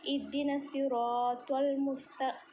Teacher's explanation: سین میں سیٹی جیسی آواز ہوتی ہے